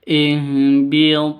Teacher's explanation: qalqalah di tengah seperti ini namanya qalqalah sugro. Agak rendah pantulannya.